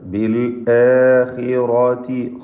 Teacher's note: ഖാഇന് കസ്ർ കുറഞ്ഞ തഫ്ഖീം കൊടുക്കുക. റാഇനും പൂർണ്ണമായ തഫ്ഖീം കൊടുത്ത് ഉച്ചരിക്കുക.